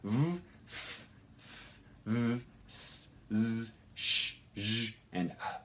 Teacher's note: you have a very narrow space that allows air to go through, but you're going to get kind of a hissing, friction-y sound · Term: fricatives